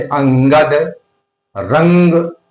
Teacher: अनुस्वार में जो है वायु नाक से ज्यादा निकलती है, मुख से कम निकलती है। जैसे अंगद, रंग, नाक से धुन ज्यादा निकल रही ना, और अनुनासिक में मुख से धुन ज्यादा निकलती, मुख से वायु ज्यादा निकलती।